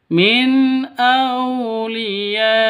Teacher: Jadi cara bacanya jelas, terang, tidak boleh didengungkan atau tidak boleh di ataupun disentak. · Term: izhar halqi